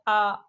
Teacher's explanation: आ का उच्चारण कंठ से होता है। तो ये कंठ वर्ण है।